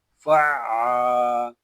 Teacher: یہاں عین مشدد ہے اور مشدد حرف کو ہم 2 مرتبہ پڑھتے ہیں، ایک مرتبہ اپنے سے پہلے والے متحرک حرف سے ملا کر اور دوسری مرتبہ خود اپنی حرکت کے مطابق ذرا رک کر۔